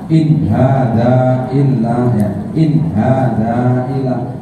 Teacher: sama-sama nun mati tapi ketemu idhar. Nggak boleh memanjang, nggak boleh mendengung. Dengung itu namanya gunnah ya.